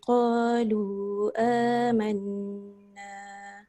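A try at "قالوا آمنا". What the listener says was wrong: Qalu tu panjang sikit, ada ombak rindu tu. Paling kurang 4.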